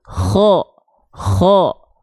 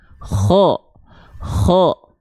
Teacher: tenggorokan bagian yang ini ya pangkal tenggorokan bagian yang paling bawah ko dilafalkan dari tenggorokan yang paling atas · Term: tenggorokan paling atas